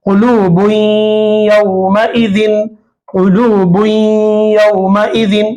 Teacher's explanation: यहां पर तन्वीन पर या आ रहा है, या आ रहा है, और या इदगाम माल गुन्ना में से है, तो तन्वीन के अंदर जो नून है, बुन में जो नून है, ये नून की आवाज को नाक में घुमाते हुए या से मिलाना है